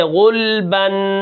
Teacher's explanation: لام کو بالکل ساکن کر کے پڑھیں گے